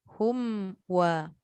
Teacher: Mim waw makhrajnya yang sama iaitu bibir tapi cara dia punya pergerakan tu lain. Mim rapat bibir. Waw dia menggerakkan keseluruhan bibir tapi tak rapat. Tu. Tapi macam mana pun jangan sampai seolah-olah macam nak pergi dekat waw terus. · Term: mim mati bertemu waw